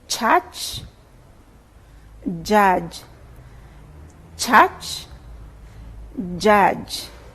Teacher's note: initially there's a closure as for plosive then the air is released slowly with friction as in the case of fricatives maybe we can remind ourselves · So there's complete closure, then it's released, the air is released with friction. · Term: affricates